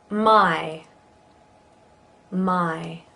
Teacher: We go from ah to e in this one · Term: Diphthong I